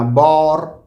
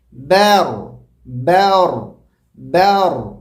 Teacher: الف کو ایڈ کرنا نہیں ہے، بلکہ با کو باریک پڑھنا ہے، صرف ایک حرکت کے برابر پڑھنا ہے، اور را کو موٹا پڑھنا ہے. را کی وجہ سے با کو موٹا نہیں پڑھنا